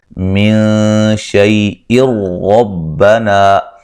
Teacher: من شیء ربنا، نون ساکن کا باریک اخفا ہے، شیء لین ہے، یہاں نون تنوین کا ادغام ہوگا لیکن بلا غنہ ہوگا، غنہ نہیں کریں گے۔ ربنا، را کو موٹا ادا کریں گے، الف مدہ ہے۔